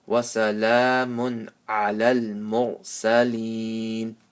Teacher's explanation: after tanween, there is a ayn. So that the ayn is one of the letters of idhar, so no gunna.